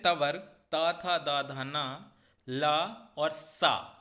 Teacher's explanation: इन सभी वर्णों का दंत उच्चारण स्थान होता है। तो जब भी आप प्राय त, थ, द, ध, न ये सारे वर्णों को बोलते हैं तो आपकी जीभ प्राय दांतों को स्पर्श करती है। अर्थात इसीलिए इन सभी वर्णों का दंत उच्चारण स्थान होता है।